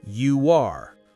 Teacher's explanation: in the phrase you are, which ends in an oo sound and starts with an ah sound, we naturally insert a w sound. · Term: vowel-to-vowel linking